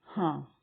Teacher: तो नाक से और मुंह से, दोनों से जब बोलते हैं ना, तो वो कहलाते हैं अनुनासिक।